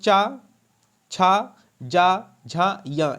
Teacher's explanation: चा, छा, जा, झा, या, ये तालु में आते हैं।